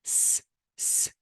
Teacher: say s s and put your finger on your th throat there will be no vibration and because there is no vibration it is voiceless · Again, if you want to say S, it's not S, it's S, S. If you want to say S, S, and put your finger on your throat, there will be no vibration.